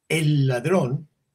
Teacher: si tú dices el ladrón aunque sea en dos palabras si tienes que repetir la l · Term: doble l